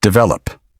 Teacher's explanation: The middle syllable is stronger. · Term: natural stress